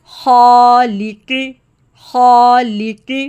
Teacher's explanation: خا کے ساتھ الف کی ساؤنڈ ہیوی ہوگی، اور آخر میں قاف کی ساؤنڈ بھی ہیوی ہے، خالقی، خالقی، ٹھیک ہے، آپ نے خیال رکھنا ہے الف کی ساؤنڈ کا۔